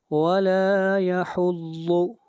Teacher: ضاد حروف مستعلیہ میں سے ہے، اس کو موٹا پڑھا جائے گا